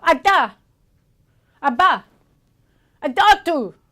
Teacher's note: the velum is moving fast enough and strong enough to actually block the nasal pharynx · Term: No nasality